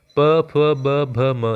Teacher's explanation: ये तो हम बोल कर देख लेते हैं कि ओष्ठ से हमारे टच हो रहे हैं